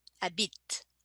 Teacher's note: And bit, it, I don't pronounce the E, but I do pronounce the T.